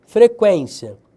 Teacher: É uma paroxítona, penúltima sílaba tônica, terminada em ditongo.